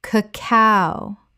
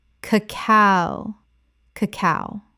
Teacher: The stress is on the second syllable, not the first.